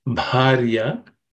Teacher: The bha is the fourth letter in the pa varga or pa class of consonants. It has to be aspirated.